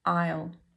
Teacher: dip thong I which is pronounced the same as your I and then you have an L an l sound but a dark l sound at the back of the throat at the end